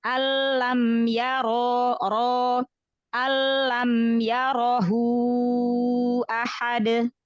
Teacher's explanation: Roknya tafhimkan lagi ya.